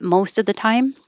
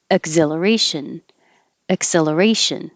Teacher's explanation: because ack and x are not stressed it's just going to sound like uh exhilaration acceleration so they they will sound very similar this one